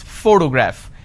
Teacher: the correct pronunciation is photograph, which means I am stressing on this particular syllable, which is the first syllable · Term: word stress